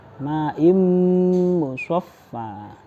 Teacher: setelah membaca i langsung ke mim ya, dan dimasukkan ke dalam mim seperti bacaan mim tasydid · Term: idgham bi gunnah